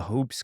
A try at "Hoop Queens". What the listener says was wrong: Hoop Queens, Hoop Queens. Hoop Queens. no S on the hoops, but Hoop Queens.